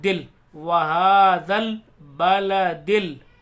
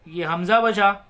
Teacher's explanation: तो लाम को तो पढ़ेंगे, अलिफ को नहीं पढ़ेंगे। इसमें एक को पढ़ेंगे, दूसरे को छोड़ देंगे, कितने अलिफ आ जाएँ चाहे से।